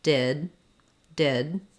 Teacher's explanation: there's no release of that D I just go up to make the D and then I don't let the air out did if I'm linking to a vowel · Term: stopped or unreleased D